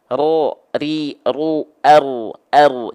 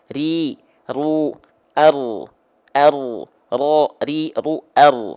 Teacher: jadi bukan tepat dari betul-betul ujung lidahnya tapi dari bagian punggung lidah kita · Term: huruf ro